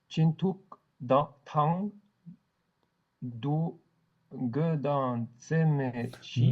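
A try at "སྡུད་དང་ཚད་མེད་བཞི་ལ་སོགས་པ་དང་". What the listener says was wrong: Dunge tang. Tu fais chaque fois une pause. Dunge tang. Tseme shi la sokpa tang. Tseme shi la sokpa.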